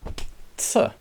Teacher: this is the alveolar, that means the front of the mouth with the tongue, the tip of the tongue, sibilant affricates